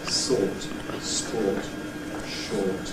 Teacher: in or we do have pretty firm rounding and protrusion of the lips. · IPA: /ɔː/